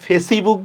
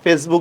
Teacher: ফেসবুকের মধ্যে ইর উচ্চারণ হয় না